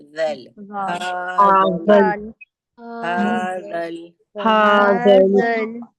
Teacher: زبان کو لگائیں گے ہمارے سامنے کے اوپر کے دو دانتوں کے کنارے سے اور نرمی سے ادا کریں گے